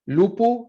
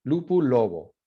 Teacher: Your voiceless stops when they're in between vowels, they become voice. Sonorización.